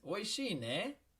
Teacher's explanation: you hear how i rose my uh intonation there it makes it into a question